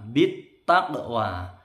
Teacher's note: Qafnya mantul mecucu. Ini huruf isti'la juga ini. Jadi makrotnya mecucu ke atas. Taqwa. Wawnya panjang 2 ketukan.